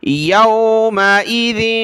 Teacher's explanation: یومئذ دال پر زبان نکالیں گے